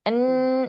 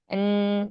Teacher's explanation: Adapun pas n nah itu memang ada ghunahnya